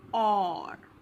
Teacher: R is really very softly spoken.